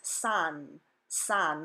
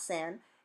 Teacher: is the word sandwich in English but it's not pronounced sandwich the letter A says ah in Spanish so the first syllable is son son not San and the second so will is weak not